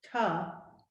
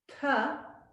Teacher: One is palatal and one is dental, where we put our tongue behind our teeth. So there's a difference between ta, where I'm pronouncing it with a palatal, and ta, where my tongue is touching the back of the front teeth. That's dental.